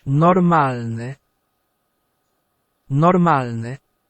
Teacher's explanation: we can hear that we need to roll the R a bit